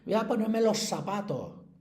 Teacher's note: Porque sabéis que en Andalucía utilizan una cosa que se llama seseo, que es decir mucho la S. en vez de la Z